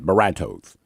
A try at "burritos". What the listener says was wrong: it's pronounced burritos, not bertos.